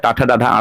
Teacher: ये मूर्धा से बोला जाता है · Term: ट वर्ग